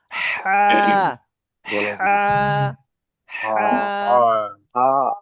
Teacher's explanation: এই হাটা উচ্চারণ হবে গলার ভিতর থেকে।